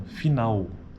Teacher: Veja que a vogal tônica, nesse caso da palavra final, está na vogal A, né, do final da palavra.